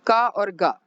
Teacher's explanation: का और गा, ये दोनों अल्पप्राण के वर्ण हैं